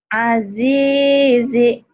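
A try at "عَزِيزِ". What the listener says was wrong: Azizi, pendek.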